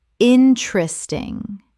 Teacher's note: Three syllables in natural speech. The second e disappears entirely.